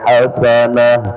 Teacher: kita berhenti pada hasanatan ya dengan mensukunkan ta marbutah maka kembali ke asalnya yaitu hasanah